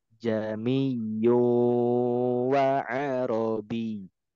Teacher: Hanya berlaku di surat Fussilat ayat 44 gitu. Jadi hamzah yang keduanya tidak dibaca jelas. Yang dibaca jelas hanya hamzah yang pertama. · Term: Tashil